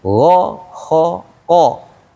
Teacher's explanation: Ada perbedaan untuk gho qo saat dia fathah dan domah ada di atas semuanya tuh maka dia tebal. Artinya mulutnya biasa.